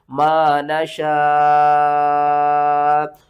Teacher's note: मद्दे मुत्तसिल है, 5 अलिफ के बराबर खींच कर पढ़ेंगे